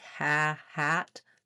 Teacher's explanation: for the front vowel a like ha hat, the back of my tongue is lifted. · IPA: /æ/